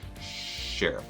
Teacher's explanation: rounded lips get that tongue back a little bit from s